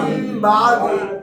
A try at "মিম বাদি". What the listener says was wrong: এই যে বা আসছে নুন সাকিনের পরে এটা মিম হয়ে যাবে।